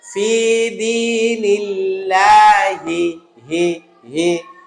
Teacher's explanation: আল্লাহ শব্দের শেষে এটা ছোট হা বা নরমাল হা, যেটা কণ্ঠনালীর নিম্নভাগ থেকে হবে।